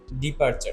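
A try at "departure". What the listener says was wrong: এটা হবে ডিপারচার। লাস্টে আরটার উচ্চারণ হবে না, ডিপারচার।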